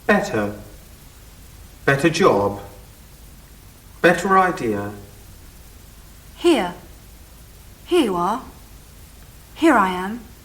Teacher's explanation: Make sure you don't pronounce the R in the first and second items in each triplet, but don't drop your R's in the third item.